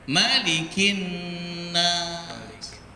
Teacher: sampai tua malikin nas panjang, padahal pendek